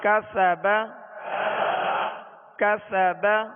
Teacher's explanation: سین میں سختی سیٹی کی آواز ہوگی اور اس کو باریک پڑھیں گے